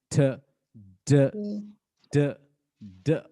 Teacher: tip of the tongue is touching the अल्विलर ridge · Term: अल्विलर साउंड